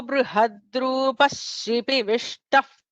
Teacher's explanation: Because the Visarga is followed by a sibilant, Shipi Vishtaha, so that there is an extra sha there.